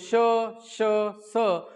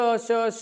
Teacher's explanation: जेव्हा आपण श चा उच्चार करतो श श स, तेव्हा मुखातून जी बी हवा किंवा उसासा बाहेर यायला हवा ती दाताला ताडल्या जाते. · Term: घर्षक